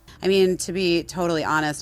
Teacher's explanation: she did it in vocal fry, so it was kind of torture to hear her talk